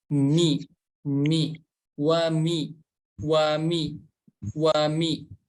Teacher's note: Huruf wa memonyongkan bibir, kemudian menariknya wa. Huruf mim makhrajnya dari kedua bibir dan berharokat kasroh, maka cara menyempurnakan harokat kasroh dengan menarik rahang kita ke bawah.